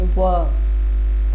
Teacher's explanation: ऊपर के दांत निचला ओठ